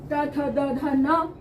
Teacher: इन सभी पांचों वर्णों का उच्चारण भी दांतों के पीछे वाले स्थान को छूकर आता है। तो इनकी ध्वनि जो है वो दांत से आती है, दांतों को छूकर आती है, इसलिए इसका उच्चारण स्थान दंत हो गया।